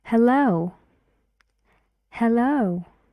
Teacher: and the stress is on the second syllable yes and one e sound hey hello well hello to you